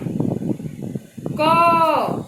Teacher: लिखने में तो स्वतंत्र आप क लिखे हैं, लेकिन उच्चारण में अ आ रहा है ना, क अ आ रहा है, और जो है क में चुपके से घुसा हुआ है।